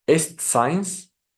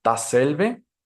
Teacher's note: Alveolar lo está haciendo en el alveolo con la punta de la lengua, pero esta ocasión va a ser sorda, es decir, no requerirá la vibración de las cuerdas vocales, así que sonará como una S.